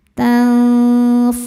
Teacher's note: ikhfa hakiki ausat karena nun sukun bertemu fa dibacanya samar disertai dengung